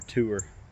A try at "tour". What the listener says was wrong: Maybe tour. Not Not tour. Tour. Not tier. Tour. Tour.